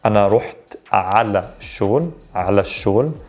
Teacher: The reason we skip the L here because the sh is what's known as a sun letter. So we skip the L sound, we double down on that first letter.